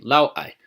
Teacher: there is an abrupt but distinct vocal absence between the two syllables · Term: syllable separator